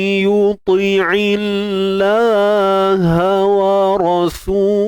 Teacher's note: kalimah Allah ni perlu dibaca dengan nipis. Dan sebab apa nipis? Sebelumnya terdapat ain yang berbaris bawah. · untuk dengung naqis ni tadi, wa man, pastikan bunyi hidung tu berlaku lah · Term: Idgham bi gunnah naqis